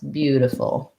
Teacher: Bew, diffful, and then we have a schwa at the end. So first syllable stress